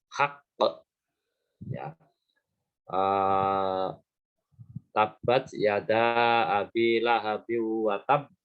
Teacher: Kolkolah itu pengucapannya mantul, memantul, ya bukan mantap betul, tapi memantul. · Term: qalqalah